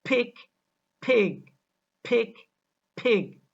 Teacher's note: K and G also affect the vowel that precedes them when they occur finally. K makes the preceding vowel shorter, whereas G makes the preceding vowel longer. For example, pick and pig. · For example, pick and pig. The E vowel in the word pig is longer than the E vowel in the word pick. So we pronounce them as pick, pig, pick, pig.